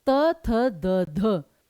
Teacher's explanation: जीभ जो है दांतों पर लग रही है दंत वर्ण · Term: दंत्य वर्ण